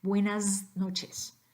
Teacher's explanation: that s at the end needs to be pronounced as a Z